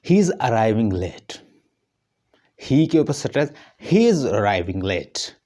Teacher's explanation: ही इज़ अराइविंग लेट, ही के ऊपर स्ट्रेस, ही इज़ अराइविंग लेट, तो लेट जो है वो फॉलिंग है, जो लास्ट पे आ रहा है। पहले स्ट्रेस आ रहा है ही के ऊपर, जो मेन है उसका सब्जेक्ट है, उसके बाद लेट जो है वो फॉलिंग है।